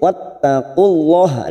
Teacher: lam jalalah yang didahului duma, kita baca tafkhim